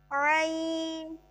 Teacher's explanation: عین وسط حلق سے حلق کا درمیانہ حصہ